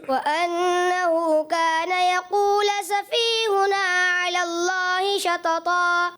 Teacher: یقولو کو یقولا پڑھا, 10 میں سے 8 نمبر. جی ہاں پیش کو زبر پڑھ دیا